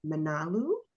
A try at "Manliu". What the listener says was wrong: Yeah, but don't pronounce with the American accent. So it's not man, it's Manliu.